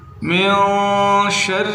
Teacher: من شر الوسواس، من، نون ساکن ہے، غنہ کریں کیونکہ آگے حروف حلقے میں سے کوئی حرف نہیں ہے۔ من شر، را کو باریک کرنا ہے